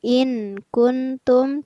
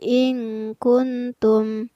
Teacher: Yang ada adalah juga hukum bacaan ikhfa, yaitu pada lafaz in kuntum. Ada nun sukun yang bertemu dengan huruf kaf, maka nun sukunnya dibaca samar, bukan in kuntum tetapi in kuntum.